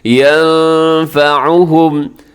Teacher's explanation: یہاں نون ساکن کے بعد فا ہے، فا حروف اخفاء میں شامل ہے، آپ یہاں پہ اخفاء کیجیے گا